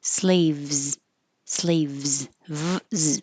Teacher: This S is a Z, so it is a kind of difficult V Z combination.